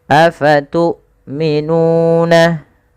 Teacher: hamzahnya harus ditahan suaranya dan ditahan nafasnya